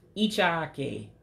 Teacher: that is a very, very high E sound. So it's E, E, E, you know, real high like that. You got to make your voice go up.